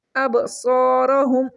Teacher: با ساکن ہے، اس کے اوپر قلقلہ کریں گے، صاد کو ہم بولڈ ریڈ کریں گے، موٹا کر کے پڑھیں گے۔